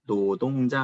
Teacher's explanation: 리을 소리가 니은으로 바뀐 현상이에요. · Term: 두음 법칙